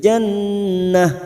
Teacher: nun yang bertasdid gunnah musaddada mendengung selama 3 harokat.